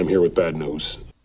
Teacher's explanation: here bad and news all stressed a little bit longer I'm and with flatter although we don't have any reductions here